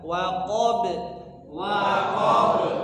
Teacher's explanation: waqob ya sama huruf ba juga diqalqolahkan